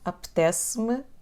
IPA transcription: ɐpətes-m